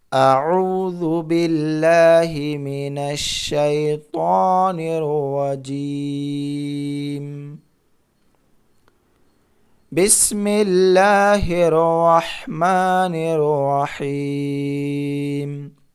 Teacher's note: میم کے اوپر جزم دے کر کے سانس توڑ رہے ہیں